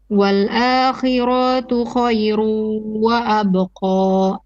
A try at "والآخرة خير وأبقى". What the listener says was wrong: You stretch the ra wal akhiratu, not ra to. Once again.